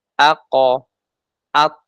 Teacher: Nah, qaf sama to dari huruf yang 5 tadi, ternyata mereka merupakan sifat isti'la, maka tebal. Ya, maka dipantulkan seperti bunyi huruf O, dipertahankan ketebalannya. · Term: Qalqalah yang istiala, qalqalah yang isti'la